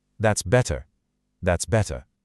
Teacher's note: a British speaker will pronounce a very crisp, very clear T.